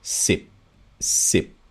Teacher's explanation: you do not have this aspiration happening at the end · in Thai, the throat closes, sip, sip. You can hear it cut off.